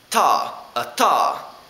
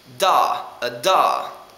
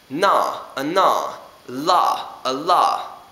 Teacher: Notice how my tongue is going between my teeth every single time. That is important, because this way you pronounce them as dental sounds and not as alveolar sounds like they are in English, so you won't have an accent.